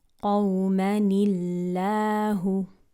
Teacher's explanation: because we're pronouncing a kasra sound, the lam in Allah's name will be pronounced with lightness. So we pronounce it قوما الله, not قوما الله.